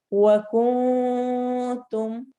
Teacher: نون پر غنہ کریں گے نون کی آواز کو چھپاتے ہوئے